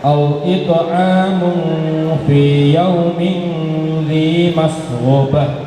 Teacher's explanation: Itu diakhiri dengan tak marbutoh, yang mana kalau tak marbutoh di akhir ayat diganti dengan huruf H